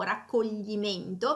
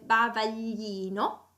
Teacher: Quando invece GL più la I e seguito poi da una consonante si trova in posizione in parola o posizione finale, allora si deve pronunciare come una laterale palatale sonora, che sarebbe il suono gl.